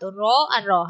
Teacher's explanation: না পার্শ্বিক তো একেবারে নয় এটা হচ্ছে কম্পন জাত র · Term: কম্পনজাত ধ্বনি